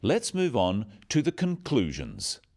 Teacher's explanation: stressing 'conclusions' because it's the key word in this sentence. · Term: sentence stress